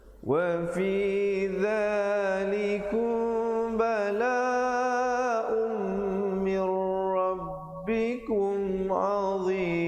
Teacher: Asalnya balaun, tetapi bila datang mim jadi idgham bi gunnah, masuk beserta dengung 2 harakat